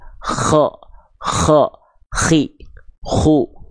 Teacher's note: bisa diikuti Ya lanjut nah seperti itu huruf k dilafalkan jadi dia mengalirkan nafas dengan karakter seperti ada ngorok-ngoroknya walaupun bukan ngorok-ngorok betul-betul